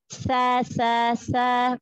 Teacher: Huruf Sa, keluarin ujung lidah. Jangan seperti Sin. Sa, sa, sa, ujung lidah keluarkan.